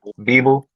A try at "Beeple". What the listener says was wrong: Beeple with a P, like Beeple.